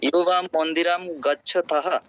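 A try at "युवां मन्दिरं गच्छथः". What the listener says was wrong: এই জোরে উচ্চারণ করতে হবে। দেখেন ত আর থ, দুটো থটা কিন্তু একটু জোরে বাতাস তাড়িত করতে হবে। থাহা, ঠিক আছে?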